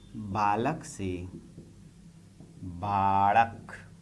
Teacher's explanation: खड़ी बोली में ल ध्वनि मराठी ल में भी बदली, जिसका उच्चारण कुछ ड़ की तरह होता है।